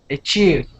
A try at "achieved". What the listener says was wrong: Okay, give me that D. Give me that D. You lost it.